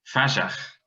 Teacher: Cregeen's alternative spelling, fajach, with an SH, shows medial voicing and fricativization of the t to a j